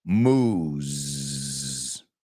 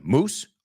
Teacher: Es más largo el sonido y acaba con el sonido zzz